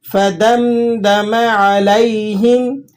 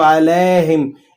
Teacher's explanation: یا لین کو آپ نے نرمی سے ادا کرنا ہوتا ہے، لیکن اس کی نرمی میں اس بات کا خصوصی دھیان رہے کہ یہ مجھول نہ ہو جائے. بعض لوگ اس کو علیہم اس طرح سے پڑھتے ہیں تو مجھول ہونے سے آپ نے بچانا ہے.